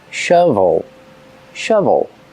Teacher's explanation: Use the short sound like cup and up for the first vowel. Relaxed sound.